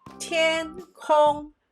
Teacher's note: the word for the sky is tin hong both are first tone